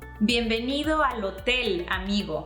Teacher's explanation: You want to keep your o's short, so you want to keep them like o.